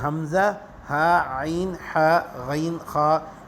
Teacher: اسی طرح آگے جو ہے حمزہ، ہا عین ہا غین خا، یہ حروف حلقی ہے، ان کو ایک ساتھ کر کے لکھ دیے کہ یہ حلق سے ادا ہونے والے ہیں۔